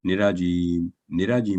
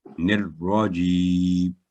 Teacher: اس میں تو جو آپ نے ताबूत पढ़ा ना, निराजीम, निराजीम नहीं, निर्राजीम, रा पर पहले सुकून की अलामत आएगी, निर, फिर रा पर फतह, निर्रा, 2 स्टेप में ये होती है तशदीद हमेशा